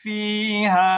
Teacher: কারণ হামজা না আসলে তো মুনফাসিল হবে না, বরং এটা আলিফ মাদ আলিফ মাদই থেকে যাবে, এখানে আর কোনো মাদের পরিমাণ বাড়বে না। যদি আপনি এভাবে পড়েন ফি হা, থেমে গেলেন, এক আলিফ মাদই হবে, এখানে হামজা যেহেতু পড়েননি মাদ্দে আসলি হবে।